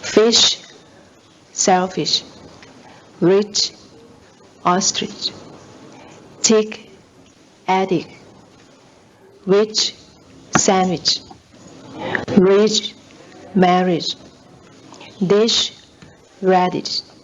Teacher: Notice that that last syllable in the second column of words is very, very short and contains the unstressed vowel sound.